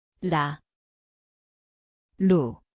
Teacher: 리을, Zvuči kao R _ litara. Mjesto je vrh jezika, lagani dodir.